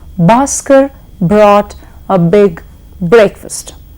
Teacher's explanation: each of those words begins with a B sound which is a voice sound